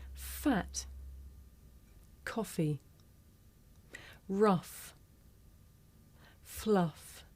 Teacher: We have 9 fricatives in Rp English: f, v, th, th, s, z, sh, zh, and h. Our first fricative is f. This is a voiceless consonant. You can hear it at the beginning of the word fat, in the middle of the word coffee, at the end of the word rough, and at the beginning and end of the word fluff.